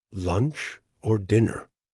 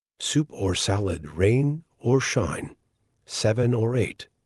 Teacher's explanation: When we're just speaking in regular conversation, this O would be connected to the word before, and it will sound like er. So the er now sounds like or er. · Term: the word or gets reduced